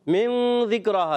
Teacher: ذال بھی حروف اخفا میں سے ہے، اس میں بھی ایک الف کا غنہ ہوگا